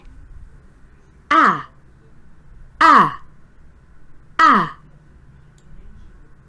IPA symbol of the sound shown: æ